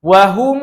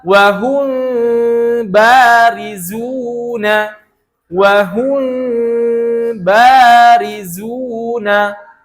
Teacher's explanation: baca ikhfa syafawi dengan itbaq. Seperti apa? Yaitu dengan merapatkan kedua bibir. Contoh misalkan dalam kalimat ini wahum itu merapatkan, namanya adalah itbaq.